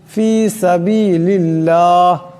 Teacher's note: আল্লাহর লামের ডানে জের আসছে আল্লাহর লামকে পাতলা আওয়াজে পড়তে হবে